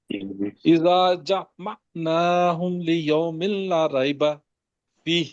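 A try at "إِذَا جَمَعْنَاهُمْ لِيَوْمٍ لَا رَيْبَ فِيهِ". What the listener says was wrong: ان کو ٹھیک کریں جی جیم کا۔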